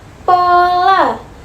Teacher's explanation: Contohnya pada fonem P dalam bahasa Indonesia dapat mempunyai dua macam pelafalan, yaitu apabila fonem P berada pada awal suku kata, maka fonem P dapat diucapkan secara lepas